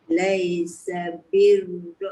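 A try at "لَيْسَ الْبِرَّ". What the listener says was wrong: Laisal birra ada alif lam.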